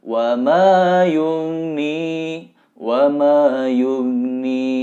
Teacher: Karena go bukan huruf qalqalah yang mesti dipantulkan. Artinya go-nya tidak boleh mantul. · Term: go sukun